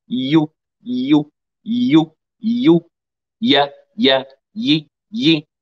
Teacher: حتى في الكسرة والفتحة والضمة اللسان يرتفع إلى وسط الحنك الأعلى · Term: الياء غير المادية